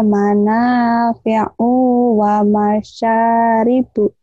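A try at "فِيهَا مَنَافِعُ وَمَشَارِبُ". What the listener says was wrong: Katanya iya, o-nya pendek. Kok panjang nih ya? Yuk, U-nya pendek. Sa-nya pendek, panjang.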